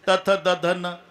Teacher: जेव्हा संबंध जिभेचा दाताशी ते दंत्य आहे